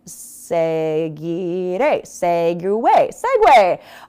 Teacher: It sounds like there is a W sound in there.